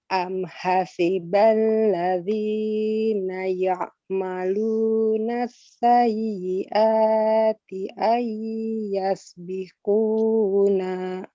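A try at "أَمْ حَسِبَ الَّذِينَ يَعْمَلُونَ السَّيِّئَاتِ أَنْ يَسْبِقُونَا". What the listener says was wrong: Jadi madnya masih kepanjangan pada alladzina, as-sayyiati dan biquna, kepanjangan. 2 harokat saja contoh. Am hasibal ladzina zina gitu.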